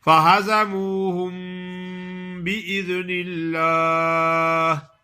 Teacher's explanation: میم ساکن کے آگے با آ گئی ہے تو اخفا کرنا ہے، یعنی غنہ کرنا ہے۔ میم ساکن کا اخفا ہے، اس کو اخفائے شفوی کہتے ہیں۔